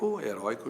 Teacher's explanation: O oi de heróico é tônico, mas a palavra não é oxítona, é paroxítona.